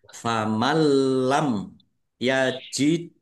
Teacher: Maksudnya langsung masuk ke huruf lam, nunnya tidak dibaca dan tidak mendengung. Ditandai lamnya ada tasdidnya. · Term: idgham bila gunnah